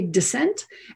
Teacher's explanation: Now, everyone may pronounce these words differently, but notice the vowel pronunciation may shift, and the pronunciation of these S's may also shift from S to Z